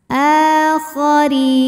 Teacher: huruf ra dibunyikan secara tarqiq karena harokatnya di bawah. Ra dibunyikan dengan tipis.